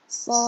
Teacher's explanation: Panjangkan 6 harokat lalu sempurnakan huruf dal sukunnya.